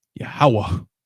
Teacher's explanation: The ha at the end is not silent. It's actually there. Right? Think of it just like a sound.